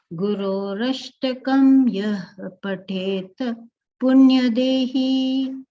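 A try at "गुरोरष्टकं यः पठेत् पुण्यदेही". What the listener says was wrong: Yaf pathet. That F sound has to come. Gurorashtakam yaf pathet punyadehi. Yeah, there should be a halantyam here. That is missing. So here it should be a halantyam pathet.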